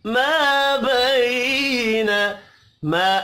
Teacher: ما الف مدہ ہے ایک الف کے برابر کھینچ کر پڑھیں گے · بی یا لین ہے نون کے اوپر زبر ہے کھینچ کر نہیں پڑھنا